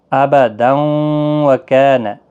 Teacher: اور ملانے کی صورت میں تنوین کے بعد یرملون کا واو آیا ہے، واو کے اوپر تشدید دے کر پڑھیں گے